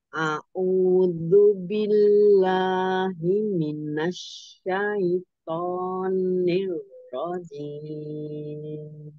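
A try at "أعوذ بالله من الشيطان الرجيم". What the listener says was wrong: Jangan monyong nironya. Niro. Jangan ke depan mulutnya. Niro, ujung lidah. Ujung lidah ya. Niro. Cuman sayinya jangan ke hidung, say enggak. Say. Sayto, sayto. Sayto, enggak ke hidung, jangan ai. Sayto.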